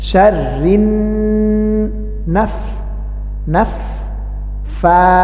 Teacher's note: নুনে তাসদিদ আছে, এই জন্য গুন্না করতে হবে, কারণ আমরা জানি নুন এবং মিমে তাসদিদ হলে গুন্না করে পড়তে হয়।